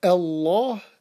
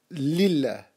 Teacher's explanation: which is the word of Allah, heavy, Allah, light, lillah